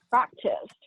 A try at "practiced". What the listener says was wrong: Right.